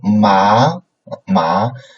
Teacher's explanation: a up coming right it's a lock right uh upcoming tone so from a lower beginning from a lower point to a higher point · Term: second tone